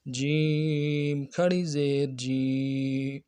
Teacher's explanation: کھڑی زیر کو 1 الف کی مقدار میں کھینچیں گے